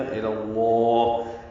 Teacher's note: امری 4 حرکات لمبا کیا. الی اللہ، الا میں لام باریک ہے اور لفظ اللہ کا لام اس میں جلالہ پر ہے